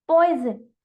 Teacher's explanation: क्योंकि यहाँ पर मैं आपको साउंड ऑफ एस बता रही हूँ, लेकिन इस वर्ड को लिखने का मेरा इसलिए यूज है क्योंकि मैं ये दिखाना चाह रही हूँ कि जरूरी नहीं है कि हमने एस लिखा है तो हम इसे पॉइसन ही पढ़ेंगे। यहाँ पर वोवल्स और कॉन्सोनेंट का कॉम्बिनेशन इसे जेड की साउंड प्रोड्यूस करा रहा है, दैट मीन्स पॉइजन।